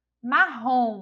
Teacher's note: Olha só Na ROM a gente já identifica aí que é a sílaba tônica é a última sílaba